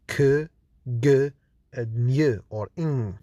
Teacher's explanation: back of the tongue can touch the velum to produce the velar sounds k, g, and ny or ing. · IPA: /k, g, ŋ/